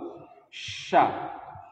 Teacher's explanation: tafasyi itu ketika diucapkan huruf Sya itu udaranya nyembur keluar